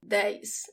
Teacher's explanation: words that end in EZ, the way I pronounce it as if there is an I after the E.